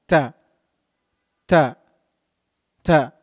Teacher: pronounced using the top tip of the tongue